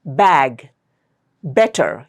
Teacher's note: You'll feel the uh vibration for the B sound. So that is voiced. D is unvoiced.